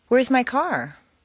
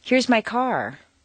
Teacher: the very end where it takes one quick little downward step a question Rises a little higher than a statement with the same intonation pattern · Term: question intonation